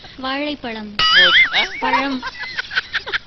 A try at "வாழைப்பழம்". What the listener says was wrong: வாழைக்கு அப்புறம் ஒரு பள்ளம் தோன்றீங்களே. வாழைப்பழம்.